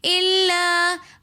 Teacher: الا کے اندر بھی حرف مدہ کے اندر الف مدہ آ رہا ہے تو اس لیے ہم اس کو ایک الف کی مقدار کھینچ کر پڑھیں گے۔